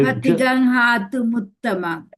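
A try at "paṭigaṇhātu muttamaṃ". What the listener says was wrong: okay, great, good.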